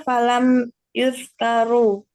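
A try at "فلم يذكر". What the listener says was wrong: Falam yazkur Falam yazkur. Kalau Yuzkar itu jadinya dia fi'il majhul jadinya. Ini kan fi'il maklum. Falam yazkur.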